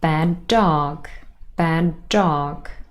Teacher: Here the two d sounds become one, and what we say is bad dog, bad dog. There's only one d sound, not two. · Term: linking